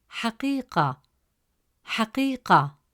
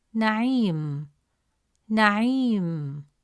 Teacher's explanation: In all these words, ya does not represent its own sound with a short vowel. Instead, it functions as a long vowel, stretching the short E sound from the preceding letter, which has kasra vowel, into a long E sound